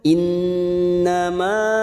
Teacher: Nun yang bertasdid gunnah musaddadah, kita tekan 3 ketuk. Innama, ma fathah ikuti alif 2 harokat.